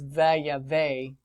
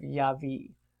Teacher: If you do a reversing vav, imperfect, you'll notice that there's a shortening, that yod drops out, and the vowel there changes to a tsere. So it's vayave instead of yavi. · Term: clipped form